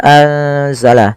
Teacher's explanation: dibaca dengan bacaan Ikhfa nunnya disamarkan ke huruf z